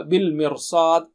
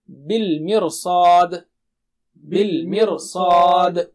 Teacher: صاد جو ہے موٹا اونچا ہے، اس کی تیاری میں، صاد کی تیاری میں را کو موٹا کر دیں گے